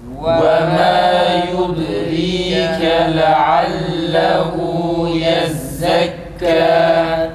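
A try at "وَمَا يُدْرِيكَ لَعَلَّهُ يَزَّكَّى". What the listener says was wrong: Leallehu değil. Leallehu. Leallehu. U çıksın tekrar.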